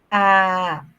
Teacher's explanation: Los centrales, la lengua se sitúa en el centro de la boca.